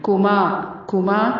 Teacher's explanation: کاف کو نرمی سے، میم الف زبر ما کو لمبا کرنا ہے